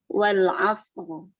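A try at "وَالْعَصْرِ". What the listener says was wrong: Asr itu maksudnya wal asr itu kelamaan. Ya, karena dia sukun, bukan dia kita tidak boleh berlama di sukun. Ya, sukun itu hanya wadah atau dia tempat saja, tidak berlama di situ. Misalnya tidak dia khusr atau wal asr, wal asr. Ya, sejatinya itu seperti terdengar tasydid wal asr, asr.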